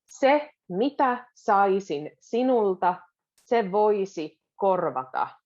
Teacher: So the beginning, se mitä, is very quick.